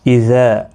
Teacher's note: اذا الف مدہ ہے، ایک الف کی مقدار کے برابر کھینچ کر پڑھیں گے